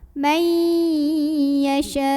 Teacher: Karena ada mad tabi'i bertemu hamzah dalam satu kata, yaitu kata yasha'u. Maka cara membunyikannya dipanjangkan boleh 4, boleh 5 harokat. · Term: mad wajib muttasil